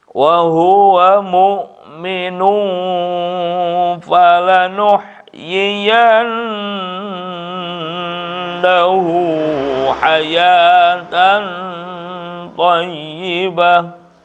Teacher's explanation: Wa nun pakai tasdid itu gunnah. Tahan 1 alif 2 harkat.